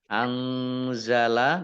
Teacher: nun sukun bertemu dengan huruf za, bacaan ikhfa, dibaca samar-samar